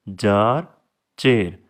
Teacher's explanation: आपकी जो tip of the tongue है या front part of योर tongue है वो आपके पैलेट से टच कर रहा होता है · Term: प्लेटल साउंड्स